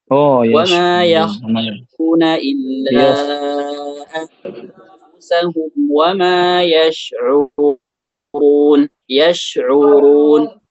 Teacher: Ra-nya berharakat dhammah, maka harus ditebalkan.